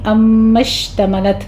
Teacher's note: میم پر غنہ واجبہ کر کے شین پر تفشی ہوگی، تا پر حمس ہوگا